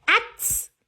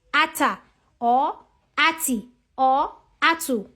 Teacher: I am not attaching any vowel sound to the ta because it has a vowelless sound. So just call the sound of that letter. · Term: Sukoon